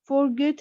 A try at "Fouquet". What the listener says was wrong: His friend Fouquet. Fouquet. The letter T here is silent.